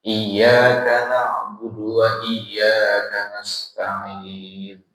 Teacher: huruf sin juga bukan termasuk huruf qolah-qolah, nggak boleh ada buntutnya · lafaz iyyaka na'budu nggak ada sakta di situ, maka mesti bersambung